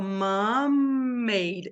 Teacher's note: Eu vou falar só uma vez o M